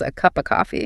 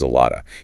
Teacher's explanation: It's a function word, so it's almost never stressed. Right, so it reduces down to a very weak schwa sound, basically an ah sound.